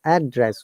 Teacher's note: we're stressing on the first part of the syllable